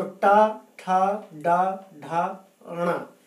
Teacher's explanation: टा, आप देखेंगे कि जीभ का अग्र भाग, अगला भाग ऊपर उठ करके और मूर्धा पर स्पर्श करता है, वहाँ टच करता है, और इसके बाद वो खुलता है। तो टा, ठा, डा, ढा, णा। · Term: टा वर्ग